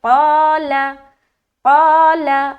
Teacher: الف کی ادائیگی بھی موٹے طریقے سے ہو رہی ہے. قال، لام کو بالکل جل چھوڑ رہے زبر کی حرکت کے ساتھ.